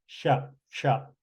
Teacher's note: both sides of the tongue will touch the roof of the mouth and the air will come through a channel in the uh Center uh now I my camera is a